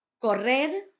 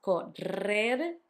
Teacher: You had the double R between the two vowels, correr, hard, and the soft one at the end